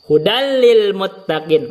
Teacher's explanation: Maka tidak ditahan 2 harakat karena tidak diidgham bi gunnah. Tidak ada gunnahnya.